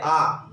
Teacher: विवृत का मतलब है जिसमें 100% मुंह खुल जाए अपना, यानी कि वर्ण को बोलने में पूरा मुंह खुल जाए। जैसे आ, अब आ बोलने में अपना पूरा मुंह खुल रहा है, ऐसे संवृत जिसमें सबसे कम मुंह खुले, ई, उ, यानी कि इसमें 25% के लगभग अपना मुंह खुलता है, इसमें 50, इसमें 75 और इसमें 100%।